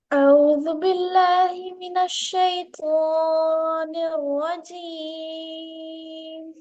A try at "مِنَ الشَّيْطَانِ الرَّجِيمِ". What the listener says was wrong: مد حکمی کو صرف 2 حرکات کے برابر کھینچنا، اس سے زیادہ نہیں کھینچنا. من الشیطان الرجیم نہیں، من الشیطان الرجیم. اعوذ باللہ من الشیطان الرجیم. زیادہ نہیں کھینچنا اس کو.